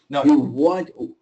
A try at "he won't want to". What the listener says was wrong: so when you're doing your o i can I can't see you but I can hear you you're opening your mouth too much